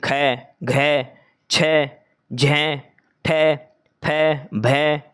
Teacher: महाप्राण व्यंजन जो होता है जिसके उच्चारण में हकार जैसी ध्वनि विशेष रूप रहती है। और श्वास अधिक मात्रा में निकलता है।